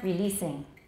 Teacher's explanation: it's an S. Don't make it a Z, whatever you do. And it's not long.